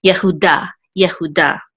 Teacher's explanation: And this is a daled with a kamatz and a hey at the end, which will say da. And the accent mark is over the daled, so we'll give the last syllable the accent.